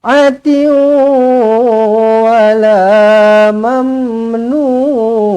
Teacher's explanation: Tanwin tak selari bertemu dengan waw idgham ma'al gunnah, dengungkan dua harakat.